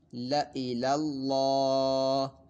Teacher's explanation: اس لام کو جو ہے ہم نے باریک پڑھنا ہے کیونکہ اس میں جلالت یعنی اللہ عز و جل کے نام مبارک کا لام نہیں ہے، تو باریک پڑھنا ہے۔ اور یہاں پہ الف کے اوپر گول دائرہ ہے، زائد الف ہے، اس کو ہم نے زائد الف کو نہیں پڑھنا۔